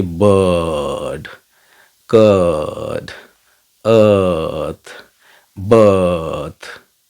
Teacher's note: हमारा next sound है अ, ये सेंट्रल वॉवल्स में आता है